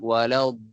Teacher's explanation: Kita sebutkan perkataan dhalin kan. Dha tu panjang 6 harakat. Kemudian kita nak masukkan ke lam tu kita ada macam gap kat situ. Dia macam waladdallin. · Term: mad lazim kalimi musaqqal